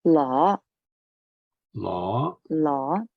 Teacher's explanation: it is the mid-rising the second tone